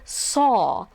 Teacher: notice how my lips are like oh